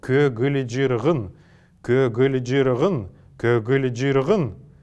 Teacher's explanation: мы услышим что между каждой из этих согласных есть неясный звук